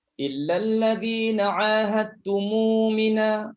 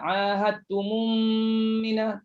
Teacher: Situ silah. Ingat bila silah mim jamak dah tak ada lagi idgham mislain. Jangan berdengung lagi. Jangan baca ahadtumum mina, tak ada dengung lagi.